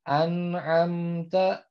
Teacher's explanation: Kalau misalnya kita baca an'amta, nah itu kan tetap ada sedikit gunnahnya.